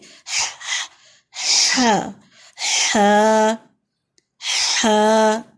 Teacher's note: ہا گلے سے نکلے گا، درمیانے حصے سے خالی سی آواز ہوگی. ہا ہا ہا الف ساتھ لگائیں گے.